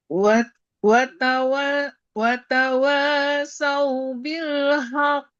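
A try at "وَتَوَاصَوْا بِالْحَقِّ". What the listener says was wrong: Bagus. Lanjut.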